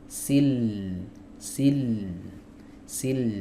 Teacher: Huruf lam itu bukan di kepala lidahnya tapi tepi lidahnya. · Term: makhraj huruf lam